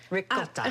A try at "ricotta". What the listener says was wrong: You gotta roll your R's.